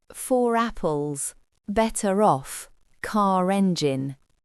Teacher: Écoutez bien comment le R, d'habitude muet, réapparaît pour créer la liaison.